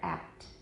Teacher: The P is not released here. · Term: unreleased